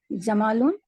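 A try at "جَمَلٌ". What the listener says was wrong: ऊंट है, जमालुन। जल्दी से पढ़ना है, जमालुन नहीं पढ़ना, जमालुन, जमालुन, ठीक है? एक जबर आ रही है ना, इस तरह।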